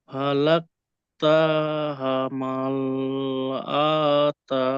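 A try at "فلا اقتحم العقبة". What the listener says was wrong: আকাবা কোনোটাই টান হবে না। বাত নয় বাহ। গোল তায়ের উপরে যদি আমরা দাঁড়াই তখন গোল তাটি হা হয়ে যায়।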